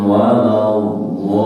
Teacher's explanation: Walaupun sedikit nih, tidak datar, tidak waladolin, walaupun sedikit dia ada tekanan, menandakan di situ ada tasydid atau syiddah. Lin dibaca panjang, namanya mad arid lis sukun. Mad arid lis sukun itu adalah mad tabi'i yang diikuti oleh huruf yang dimatikan ketika dibaca waqaf.